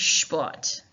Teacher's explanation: And actually, to say sport in German, if you want to sound a bit more German, you need to sh the first part there, because it's with an S and a P, you make the S sound like a sh sound